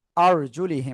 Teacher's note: রাকে জবর মোটা আওয়াজে পড়তে হবে